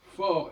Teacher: fort F RT on n'entend pas le T